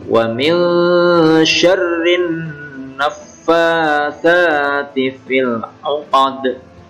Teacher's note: Naffatha ini mad tabi'i 2 harokat atau 2 ketukan panjangnya